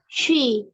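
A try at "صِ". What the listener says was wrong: Jangan sui. Soi di pangkal lidah, di lidah ya. Soi. Nah, nanti latihan jangan she ya. Jadi tengah lidah ini kalau seperti ini. Soi. Ini kurang naik tadi. Yang kasrahnya ini tadi yang fathah kan udah naik ya. Pangkal lidah anti udah naik. Yang kasrahnya.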